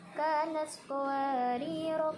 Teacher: ro yang pertama itu dibaca pendek dan ro yang kedua dibaca panjang